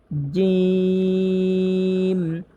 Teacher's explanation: জিহ্বার মধ্যখান তার বরাবর উপরে তালুর সঙ্গে চাপ দিয়ে জিম উচ্চারণ করতে হবে, তাহলেই শক্ত হবে।